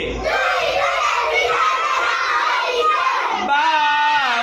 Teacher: দুই ঠোঁটের বিজা জায়গা হইতে বা উচ্চারিত হয়